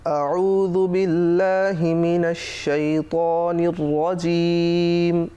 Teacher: জুটা জিহ্বার আগা উপরের দাঁতের আগার সঙ্গে লাগিয়ে নরম করে পড়তে হয় · আইন কণ্ঠনালীর মাঝখানে চেপে চেপে উচ্চারিত হয়